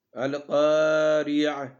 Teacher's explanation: کاف یہاں پہ موٹا پڑھنا ہے اور کاف کے بعد الف بھی ہے، اس کو تھوڑا سا لمبا کرنا ہے ایک الف کے برابر